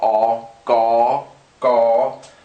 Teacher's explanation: this is actually similar to an english g it's unaspirated